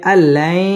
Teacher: ইদগামে বা গুন্না গুন্না সহ মিলিয়ে পড়তে হবে